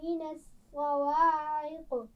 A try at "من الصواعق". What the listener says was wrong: صاد کو موٹا پڑھیے، من الصواعق۔